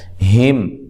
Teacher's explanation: میم ساکنہ کو ہلانا نہیں ہے، میم ساکن کا اظہار ہے، غنہ نہیں کیا جائے گا